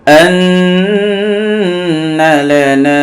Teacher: নুনে মিমে তাসদীদ গুণা করা ওয়াজিব, একালি গুণা করতে হবে। লাম জবল্লা নুন আলি জবর না, জবরের বাম পাশে খালি আলিফ মদের হরফ একালিফ টান।